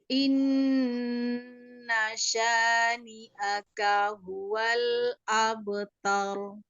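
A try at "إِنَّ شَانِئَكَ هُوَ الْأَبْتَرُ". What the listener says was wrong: tadi yang pertama ragu tadi inna itu agak mengayun di i.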